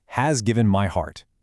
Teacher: Take the phrase, "has given my heart." Do you hear that repeating H sound? It's soft, it's breathy. It almost sounds like a literal sigh of relief.